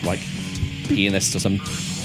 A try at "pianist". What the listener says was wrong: it sound like it's? I don't know why, but the way you pronounce it is like it's spelled P-E-E-N.